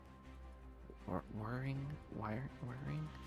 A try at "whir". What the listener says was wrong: It's WHIR. There's no E.